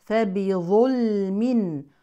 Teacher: نفخم الظاء لكن نرقق اللام واللام هنا لام ساكنه في اسم دائما مظهره